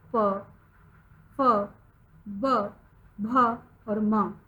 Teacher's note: इसका जो उच्चारण स्थान है वह होठ है, हमारे ओष्ठ।